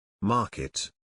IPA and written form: ˈmɑː.kɪt (Market)